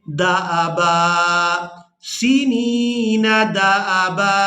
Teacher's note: बा पर एक ज़बर पढ़ेंगे और इसको एक अलिफ मिक़दार खींच कर अदा करेंगे